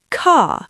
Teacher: in London, or standard British English, we are non-rhotic. I do not say car, I say car.